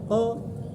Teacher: K ini hurufnya makhrajnya dengan qaf selisih agak maju. Ko di belakang. Lidah paling belakang.